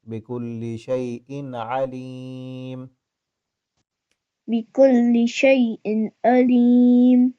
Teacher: تنوین پہ نا غنہ کرنا ہوتا ہے، لیکن یہاں تنوین کے بعد آگے حروف حلقی میں سے ہے عین، تو یہاں پہ غنہ نہیں کریں گے ہم